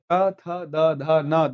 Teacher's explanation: तो का वाली लाइन कंठ में आ गई, चा में तालु आ गया, टा में मूर्धा आ गया, ता में दंत आ गया और पा वाला ओष्ठ।